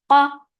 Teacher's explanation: The sound is short, and there is shidda. Qa, qaf is heavy. The sound is short.